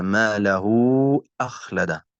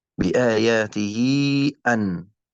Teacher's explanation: والمد الصلة الكبرى يا كرام هو مثل الصلة الصغرى، يعني أن تقع الكناية بين متحركين، لكن في الصلة الكبرى يجب أن يكون المتحرك الثاني همزة، مثل قوله تعالى ما له أخلد، هكذا، بآياته أن. وأيضا مقدار مد الصلة الكبرى يا كرام مثل مد الجائز المنفصل والواجب المتصل، سواء 4 أو 5 حركات